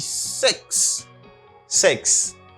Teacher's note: Il a prononcé comme E légèrement, on dit 6